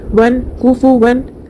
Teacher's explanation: تنوین کے بعد حروف ہلکی میں سے حمزہ ہے تو نون کی آواز کو ظاہر کر کے بغیر غنہ کے جلد پڑھیں گے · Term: اظہار